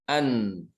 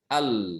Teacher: Bagian lidah yang nempel ke gusi itu lebih sedikit dibandingkan dengan lam. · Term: makhraj nun